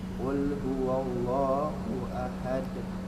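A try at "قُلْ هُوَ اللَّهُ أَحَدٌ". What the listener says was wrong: Satu catatan, jangan huwallah tapi huwa. Huwallah. Qul huwallahu ahad. Wallahu ahad. Aha. Ha. Ha. Ahad. Aha. Ahad.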